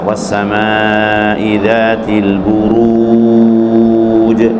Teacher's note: Kemudian diantara yang harus kita perhatikan agar kita tidak tergelincir kepada kekeliruan dalam membaca mad arid lisukun, khususnya yang berakhiran atau mad arid lisukun yang berasal dari huruf wawu ya, dhamma ketemu wawu mati ya, yaitu harus lurus, u-nya itu harus lurus ya